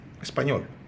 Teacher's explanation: Porque a tônica é a última, portanto, uma palavra aguda, não terminada em NS ou vogal.